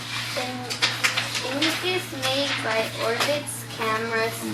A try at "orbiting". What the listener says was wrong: Not orbits. You were close. The suffix is not a s sound, it's an ing sound.